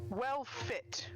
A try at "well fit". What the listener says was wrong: Well, no, you don't pronounce the last consonant in any of the words.